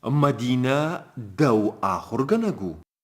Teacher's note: При употреблении полной формы говорящий подчеркивает, выделяет притяжательное местоимение, то есть логическое ударение в предложении падает на притяжательное местоимение